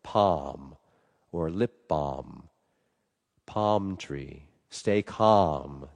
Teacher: there's no L in those words and it's a big open a.